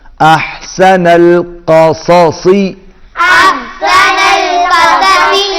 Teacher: صاد کو جب ادا کریں گے تو ہونٹ گول نہیں ہوں گے